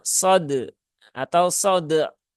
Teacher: Kalau sode, nah, ini juga hilang ya suara ainnya. Maka itu cara membaca yang kurang tepat.